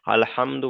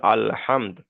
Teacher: আলহামদু যদি এখানে আপনি আয়াতের শেষে কিংবা মাঝে থামেন আলহামদুর জায়গায় সেক্ষেত্রে দালের উপরে পেশটাকে সাকিন করে তার আগের অক্ষরের সাথে মিলিয়ে পড়তে হয়। যেমন হামজা লাম জবার আল হা মিম দাল জবার হামদ আল হামদ এখানে যখন থামবেন সেক্ষেত্রে আর আলহামদু বলা যাবে না।